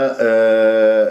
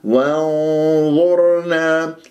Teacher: وانظرنا وشوف التفخيم من الواو إلى النون لأن لديها همزة وصل، النون مع الظاء إخفاء بغنة مفخمة بحسبة مرتبة الظاء ثالثة